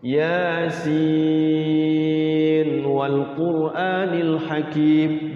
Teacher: Yasin wal quranil hakim gitu diizharkan.